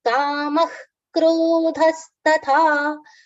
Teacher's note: there's a visarga after kama which has been pronounced as kha like only the blowing of air like kha